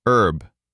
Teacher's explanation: In British English, the H is pronounced herb.